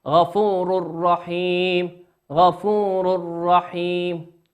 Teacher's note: تنوين أتى بعده حرف الراء، والراء من حروف الإدغام بغير غنة